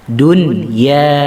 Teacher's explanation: Di situ ada nun yang disukun, nun yang disukun bertemu dengan ya. Kita nggak boleh membacanya duya, nggak boleh. Kita harus membacanya idhar, jelas suara nunnya.